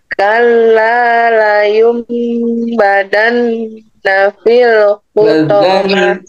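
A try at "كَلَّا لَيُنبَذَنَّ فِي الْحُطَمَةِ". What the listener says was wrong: Za, ya, pakai za. La yumbazan.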